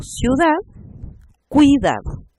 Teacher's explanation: vocal cerrada más vocal cerrada ejemplo ciudad cuidado ya en ambos casos son una sílaba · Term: diptongo